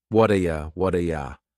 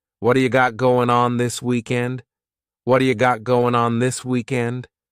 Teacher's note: This is really typical of American English where a t that's surrounded by vowel sounds is going to change to a d. It's called a flapped tea and it just rolls off your tongue in a smooth way.